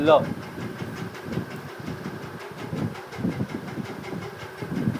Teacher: जिनके उच्चारण में जिह्वा का अगला भाग मसूड़े को छूता है और वायु पार्श्व आसपास से निकल जाते हैं, वे पार्श्विक।